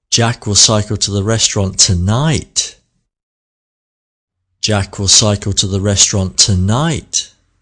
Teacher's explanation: Let's do the shift, the exaggeration, the stress on the word tonight. Not tomorrow, not at the weekend, not next week, but tonight. · all the words in the sentence are read very quickly, apart from the key word tonight.